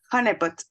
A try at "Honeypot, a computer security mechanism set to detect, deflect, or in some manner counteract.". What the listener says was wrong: You sound like a French woman, but it sounds good.